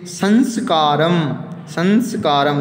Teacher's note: ये अनुस्वार रूपी जो है वो कहाँ से निकलने वाली ध्वनि है, नासिका से निकलने वाली ध्वनि है